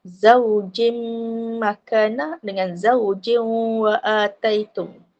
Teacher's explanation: Ya, ni idgham ma'al gunnah atau idgham bil gunnah. Masuk bersama dengan dengung dua harakat.